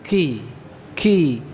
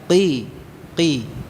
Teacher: Jadi bukan ki ya, qi tanpa mengalirkan nafas atau menahannya ya, jahr